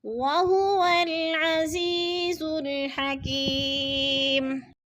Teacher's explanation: حکیم، ادھر پھر یا مدہ، یا ساکن سے پہلے کاف کے نیچے زیر ہے تو یا مدہ، یا مدہ کو ایک الف 2 حرکات کے برابر ہم لمبا کر کے پڑھیں گے